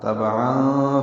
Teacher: عین وسط حلق سے نکالیں